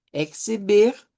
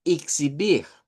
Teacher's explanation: en Brasil lo que comienza con e se puede pronunciar con i o con e